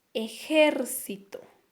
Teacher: esa palabra ejército tiene una mayor intensidad de voz en su segunda sílaba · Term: acento